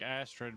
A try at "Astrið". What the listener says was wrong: It's Astrид, but you don't pronounce the D at the end. Yeah, Astrið or well, depending on your dialect of my language, you could either do Astrið or Astrið.